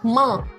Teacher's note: मा में भी अगर आप नोटिस करेंगे तो नाक और मुख दोनों से ध्वनि बाहर आती है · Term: अनुनासिक